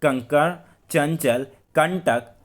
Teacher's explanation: इनके उच्चारण में नाक से अधिक हवा या सांस कह सकते हैं निकलती है और मुंह से बहुत ही कम हवा निकलती है। यह स्वर के बाद आने वाली ध्वनियाँ होती हैं, जैसे कि आपका कंकड़, चंचल, कंटक आदि।